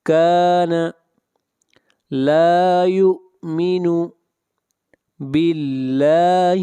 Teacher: لفظ اللہ کو باریک پڑھیں گے اس لیے کہ لفظ اللہ سے پہلے زیر ہے